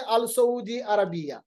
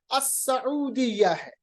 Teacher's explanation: हैं अल सऊदी अरबिया अल सऊदी नहीं है अ सऊदिया क्योंकि लाम नहीं पढ़ा जाएगा सीन जो है यह हर्फ शमसी है